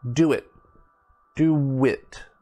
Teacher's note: so you see my mouth is actually making a w sound